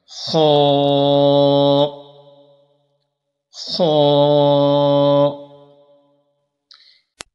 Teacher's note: خا کو پر کر کے پڑھنا ہے تو منہ کو ذرا کھولیں گے